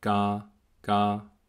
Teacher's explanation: Da fällt das R sozusagen komplett weg. Es ist nur noch ein A.